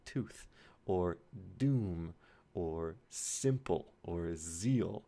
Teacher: So these are sounds made there, and you might feel it more if you make a sound like tooth, that t in tooth. Your tongue is touching your alveolar ridge